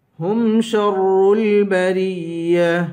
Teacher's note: شین کو را سے ملا کر را کو سختی کے ساتھ پڑھیں گے